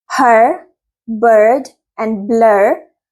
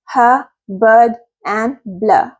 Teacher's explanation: in American English these sounds are pronounced as ER as in her bird and blur and in British English they are the uh sound